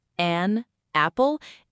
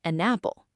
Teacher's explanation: Naturally, it becomes an apple. The N jumps over and connects to apple. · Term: linking